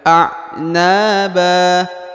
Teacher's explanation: huruf na dibaca panjang dua harakat ya karena di depannya ada Alif Anaba huruf ba dibaca panjang dua harakat dan huruf ban berubah